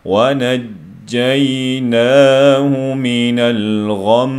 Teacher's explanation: Bu yerda ulab o'qigan vaqtida g'unni chiqardik. Shunga to'xtagan vaqtda g'unnining borligini bildirish uchun 2 harakat miqdori so'zlab o'qildi.